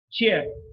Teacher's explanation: There is a place of articulation, and the manner of articulation is affricate. Affricate meaning there is a total closure like the plosives, but there is a slow release and there is some friction.